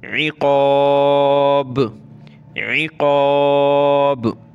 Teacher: عین کو گلے سے نکالیں، قاف کو موٹا کریں گے، با پہ قلقلہ کرنا ہے